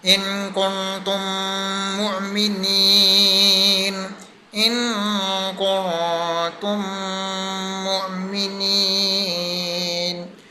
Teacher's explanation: جیسے میم ساکن کے بعد اب میم آ گیا، میم کے بعد میم آ گیا، ایک میم کے بعد دوسرا میم آ گیا، تو ہم نے پہلے میم کو دوسرے میم کے ساتھ مرج کر دیا، پھر ملا کر ہم نے پڑھا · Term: ادغام شفوی